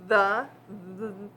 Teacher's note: when i say the the my vocal cords are vibrating so that means the th is voiced